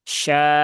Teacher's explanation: cukup dua harokat saja